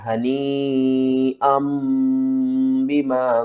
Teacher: جو حمزہ دو زبر ان کے بعد نون کی آواز آ رہی ہے نا اس کو آپ نے میم کی آواز میں بدل کر پڑھنا ہے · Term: اقلاب